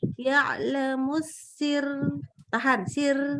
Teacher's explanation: sekarang karena dia wakaf dia jadi tipis dan r-nya jangan terlalu pendek.